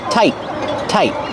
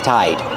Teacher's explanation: when I say tight you have a t at the end but you hear a stop T